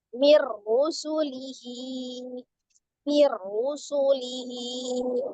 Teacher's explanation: Maka hukumnya idgham bila gunnah tadi, kita langsung ke huruf ra, mir. Minnya hilang, ya, nun sukunnya hilang. · Ra-nya juga dibaca dengan tebal, ya.